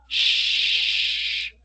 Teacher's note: Si tocamos la garganta, shh, vamos a sentir que no hay vibración. Obviamente hay sonido, shh, pero no hay vibración.